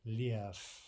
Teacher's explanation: It ends with a V in Russian, a V, but it's pronounced as though that final V were an F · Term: devoicing of a final consonant